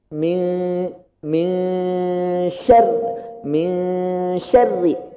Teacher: Min nunnya ikhfa jadi samar. Enggak min, enggak ming, tapi sudah ancang-ancang sya. · Ro-nya kasroh Pak, tipis. Kalau tipis senyum, ke arah senyum. Min syar, enggak syar enggak.